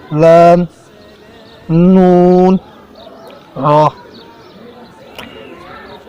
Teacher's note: ज़ुबान का किनारा और दांतों की जड़ के तालों की जानब वाले हिस्से से अदा होते हैं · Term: हरूफ तरफिया